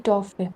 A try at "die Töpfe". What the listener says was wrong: die Töpfe. Oh, Umlaut. Ja, die Töpfe.